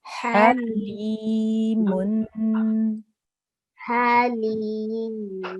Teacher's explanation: Make sure to make that 2-second nasal sound.